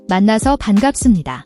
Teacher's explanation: The double an in man-na-SEO should sound like a prolonged N sound, not two separate N's. The B in bang-GAP-seup-ni-da has a slight P sound, and the SUM-ni-da ending has a soft M sound before the N. Be careful not to drop the P sound.